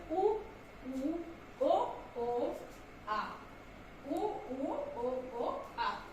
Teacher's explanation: ये क्या होते हैं पश्चात स्वर, पहले मैं आपको बता दूं, जीभ का अंदर का हिस्सा जब हिलता डुलता है उससे मतलब जब कोई वर्ण निकलता है या उस वाले जीभ का पीछे का हिस्सा हिल रहा है उस वर्ण को बोलने में, तो वो आपके पश्चात स्वर कहलाते हैं